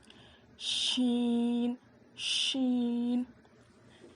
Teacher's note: زبان کے بیچ کے حصے سے شین ادا ہوتا ہے